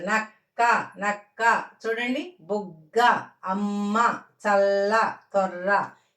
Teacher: ఇవి ద్విత్వాక్షర పదాలు ఇవి నొక్కి పలుకుతున్నాం పలికినప్పుడు ముందు పలికేది ఆఫ్ పలుకుద్ది అన్నమాట ఈ క కి మొదటి క అని నెక్స్ట్ ది క అని కొలుతున్నాం